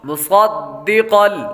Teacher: میم کے بعد صاد حروف مستعلیہ میں سے ہے، اس لیے صاد کو پر یعنی موٹا پڑھیں گے. آگے دال حروف قلقلہ میں سے آ رہا ہے، اس لیے قلقلہ کریں گے.